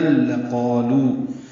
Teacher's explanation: لام کو جلدی سے پڑھیں گے، قاف پورا اور دو حرکات لمبا ہے، الف مدہ ہے، لو واو مدہ ہے، لو وولین ہے، لا الف مدہ ہے، یہ الف مدہ واو مدہ دو دو حرکات لمبا کریں گے.